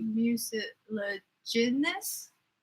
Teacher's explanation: Mucilaginous is, I would imagine the pronunciation, the emphasis is on the GIN